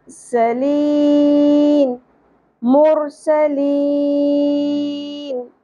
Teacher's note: آخر میں مد عارض وقفی نون ساکن کی آواز کلیئر